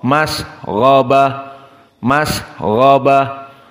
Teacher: gho mufakhamah dan dia mufakhamah yang selalu dalam keadaan muabbad dalam keadaan harakat apapun · gha di sini mufakhamah dogtin, dan dia di darajah yang kedua dikarenakan sukun dan sebelumnya fathah. Derajat kedua dari as-sukun. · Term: gha mufakhamah